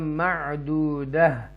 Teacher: اینڈ پہ تا دو زبرتان جو ہے وہ ہاں ساکنہ میں چینج ہو جائے گا